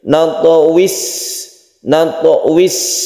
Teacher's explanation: Sifatnya rokhawah, artinya dilepas. Rokhawah itu artinya kita tidak boleh menahan huruf sin tersebut. Natwis, berdesis.